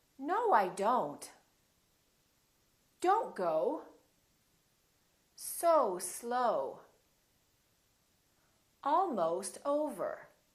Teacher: so it's actually two sounds it's o and O together so you have to move your mouth from all to oh